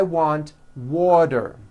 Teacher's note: the t turns into a d and the whole word is voiced